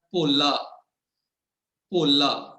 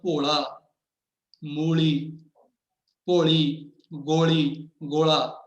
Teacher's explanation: ਪਰ ਜਦੋਂ ਅਸੀਂ ਬੋਲਦੇ ਹਾਂ ਭੋਲਾ, ਮੂਲੀ, ਭੋਲੀ, ਗੋਲੀ, ਗੋਲਾ, ਤੇ ਇਹਨਾਂ ਸਾਰਿਆਂ ਦੇ ਵਿੱਚ ਸਾਡੀ ਜੀਭ ਦੀ ਸਥਿਤੀ ਹੈ ਉਹ ਨਹੀਂ ਰਹਿੰਦੀ ਜੋ ਕੱਲੇ ਲੱਲੇ ਵੇਲੇ ਸੀ, ਜਿਹੜੀ ਭੋਲੇ ਵੇਲੇ ਸੀਗੀ। ਹੁਣ ਸਾਡੀ ਜੀਭ ਥੋੜਾ ਜਿਹਾ ਉਲਟ ਕੇ ਉੱਪਰ ਲੱਗਦੀ ਹੈ, ਫਿਰ ਵਾਪਸ ਆਉਂਦੀ ਹੈਗੀ। ਸੋ ਜਦੋਂ ਸਾਡੀ ਜੀਭ ਦੇ ਵਿੱਚ ਇਹ ਜਿਹੜੀ ਸਾਡੀ ਜੀਭ ਤੋਂ ਉਲਟੇ ਇਹ, ਉਦੋਂ ਅਸੀਂ ਲੱਲੇ ਪੈਰ ਬਿੰਦੀ ਲਾਉਣੀ ਹੈ।